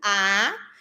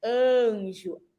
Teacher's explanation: a letrinha A, ela tem um som aberto, A, e também tem o som nasal de anjo, que não é aberto